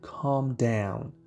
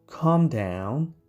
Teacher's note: L is silent so we say calm down